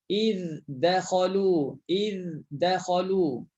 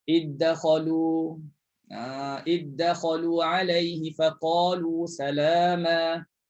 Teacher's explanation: Jangan cepat-cepat sehingga berlaku idgham kalau baca hafs. Tapi kalau baca hamzah senang je, masuk terus. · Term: izhar